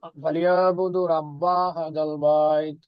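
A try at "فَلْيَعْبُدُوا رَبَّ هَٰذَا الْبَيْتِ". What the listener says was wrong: এখানে একটু মাঝ এখানে টান হবে না, এখানে এই যে দুইটা মাদ আপনি মিস করতেছেন, এখানে একটা মাদ হবে, এখানে একটা মাদ হবে। ফালিয়াবুদু রাব্ব হাযাল বাইত।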